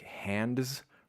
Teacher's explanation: the N, the D, the Z, those are all the tip of the tongue towards the front, top of the mouth. That can be reduced somewhat dramatically for many speakers, but this is not an example of that.